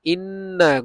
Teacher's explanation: গুন্না করছি কারণ নুন আর মিম এর উপরে তাসদিদ আসলে ওয়াজিব গুন্না